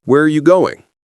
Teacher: Voice goes down on going. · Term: WH questions fall